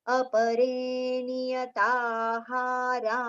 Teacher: the visarga sound with the exhalation should be heard like fa. We should not pronounce fa, but the visarga sound should be heard like fa.